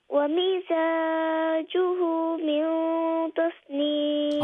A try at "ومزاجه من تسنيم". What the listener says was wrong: Okay, don't say mil. You don't want to hear that wow sound in the ikhfa. It's mil tasneem, mil tasneem. No, don't say mil because we are hearing the wow sound.